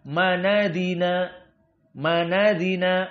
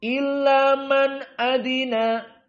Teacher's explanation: harakat pada Hamzah dipindah kepada Nun yang sukun menjadi fathah dibaca manadina manadina hamzahnya hilang fathahnya ee nunnya sukun difathahkan pindahan